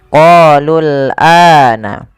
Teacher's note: Pada lafal qalul a ini qa panjangkan 2 harakat karena ia mad tabi'i. Kemudian lul ini tidak boleh ditetap panjangkan karena waw alifnya dianggap tidak ada, langsung ke huruf lam yang disukunkan. Qalul ana. Kemudian pada lafal ana, a-nya dipanjangkan 2 harakat.